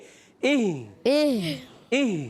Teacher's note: دونوں حلق کے نیچے والے حصے سے ادا کریں گے